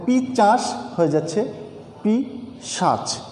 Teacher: একটির জায়গায় আরেকটি ধ্বনি পরিবর্তিত হয়ে অন্য স্থান দখল করে নিচ্ছে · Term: ধ্বনি বিপর্যয়